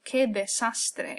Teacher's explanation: we pronounce every single vowel, okay, with the exception of this U here in que, because it's part of the sound k.